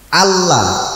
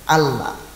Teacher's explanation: Itu namanya tasydid. Ya karena hakikatnya adalah huruf double, ya tentu bacanya harus ada tekanannya.